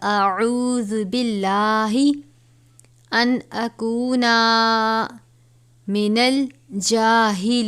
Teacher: لام سے پہلے زیر ہے، لام کو باریک پڑھیں گے